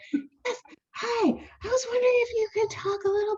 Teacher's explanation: I changed my voice to this high, breathy voice. It was kind of like Marilyn Monroe.